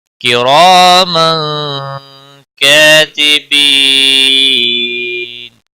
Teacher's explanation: را زبر کی وجہ سے پر پڑھا جائے گا. تنوین کے بعد حروف اکفا کا کاف ہے، اکفا حقیقی ہوگا